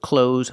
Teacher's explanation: We don't use the TH sound. Just close like close the door.